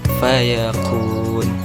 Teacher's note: Huruf-huruf hijaiyah yang keluar dari dua bibir. Pertama, huruf fa. Tempat keluarnya bibir bawah menyentuh gigi atas